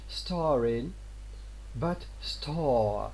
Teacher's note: Apocope is the loss of a segment, or segments at the end of a word. The loss of final R in British English and American English in parts of the East is an example of apocope.